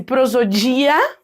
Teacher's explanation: uma prosodia adequada agora se eu dissesse prosodia vamos supor né deixando mais forte o dia ali